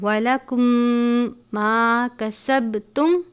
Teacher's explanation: میم ساکن کے بعد دوسری میم ہے، ادغام شفی یعنی غنہ کرتے ہیں اور با پہ قلقلہ کرتے ہیں